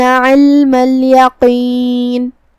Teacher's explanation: دھیان رہے ہمیں لام کو جزم سے ادا کرنا ہے اور اسے ظاہر کرنا ہے